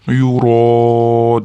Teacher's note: Yuraun da mat muttasil kelayotganligi uchun 4-5 harakat cho'zish vojib, ya'ni shart. Yuro deganda barmoqlarni 4-5 deguncha cho'zasizlar.